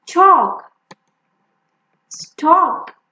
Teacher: we do not pronounce L when it is between A and K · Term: silent L